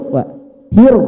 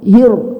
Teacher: Karena berharokat fathah, maka bunyinya harus tebal.